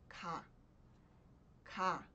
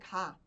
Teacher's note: G teria som de G mas não é G é k a gente pode até dizer que é um meio termo entre o k e o g